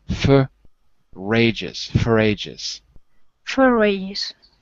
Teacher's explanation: Put the R on the ages.